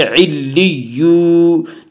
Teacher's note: واو مدہ کو ایک الف کے برابر کھینچ کر پڑھیں گے